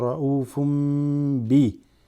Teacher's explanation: Because you have ra'ufun here with the ba that comes after tanween, so ra'ufum bi. You're preparing to hit the ba, so this meme joins ra'ufum bil.